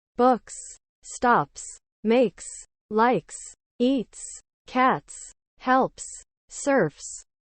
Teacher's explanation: four basic rules will also be helpful to you rule one when an S follows a voiceless consonant it is pronounced as s